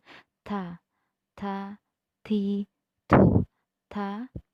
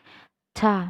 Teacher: huruf ta yang mana cara membacanya keluar desis sedikit, tidak berlebihan